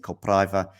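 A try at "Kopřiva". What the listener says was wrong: It's Kopshiva. Yeah, it's that R with something.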